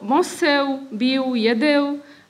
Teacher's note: Elové participium slovies je nahradené bilabiálnym U